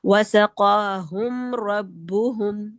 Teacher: इसमें गुने के बगैर एक्स्ट्रा गुने के बगैर इजहार करेंगे।